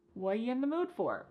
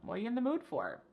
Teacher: What are you in the mood for? The word are is gone. And the word you has been reduced to y.